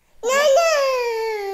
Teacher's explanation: deleting weak syllables so that banana becomes nana